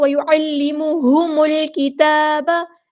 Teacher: اگر یہاں پہ میں حمزۃ الوصل سے سٹارٹ کروں گی تو الکتاب پڑھوں گی، اور اگر میم کو لام کے ساتھ ملا دوں وصل کروں گی تو وَيُعَلِّمُهُمُ الْكِتَابَ. میم کو جب لام کے ساتھ ملا دیں گے حمزۃ الوصل ہمارا ڈراپ ہو جائے گا